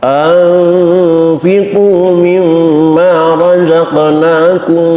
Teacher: mim mati ketemu mim, idgham mutamatsilin